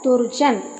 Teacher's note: उसी प्रकार दुर्जन, दू प्लस जन, तो दू में ऋस्व ऊ है और विसर्ग के बाद जा है, यानी चा छा जा, यानी चा वर्ग का तृतीय वर्ण है, तो यहाँ विसर्ग का हो जाएगा रा, तो रा जो आधा है हम उसको हलंत के माध्यम से दर्शाते हैं।